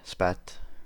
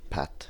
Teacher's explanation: In the former, spat, it appears in its basic form, while in the latter, pat, it is aspirated, meaning more air is released as it is said, and thus it is an allophone.